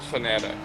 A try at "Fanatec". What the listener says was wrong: It's an E, not an I.